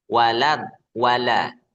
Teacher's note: Membaca waladhdallin jangan walo walo. La itu tipis.